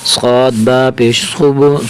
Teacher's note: صاد کو موٹا کر کے پڑھیں گے اور صاد کو با کے ساتھ ملیں گے